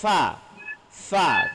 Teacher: Hammas ini lepas angin, nafas, suara mendesas.